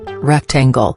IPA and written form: ˈrɛkˌtæŋɡəl (Rectangle)